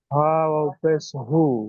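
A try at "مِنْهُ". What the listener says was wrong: হ ও নাই ও নেই এখানে হাফেশ হু মিনহু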